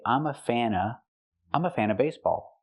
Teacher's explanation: another pronunciation option we have with of is to say uh and not pronounce the V sound at all but this is only when it's before a consonant we see